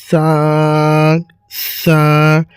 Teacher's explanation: এই সা অক্ষরটি মুখের যে অংশটিকে বের হয় সেই অংশটি হচ্ছে যে দুই দাঁতের মাঝামাঝি কিছু পরিমাণ জিহ্বাটা বের হয়ে থাকিবে এবং সা, সা, সা উচ্চারণটি হবে।